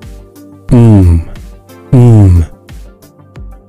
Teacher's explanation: The buzzing feeling means that mm is a voiced sound. When we feel that buzzing or vibration, we are using our voice to make the sound.